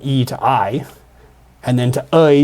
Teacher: the vowel changed from i to aɪ. And then to ʌɪ just in Canada.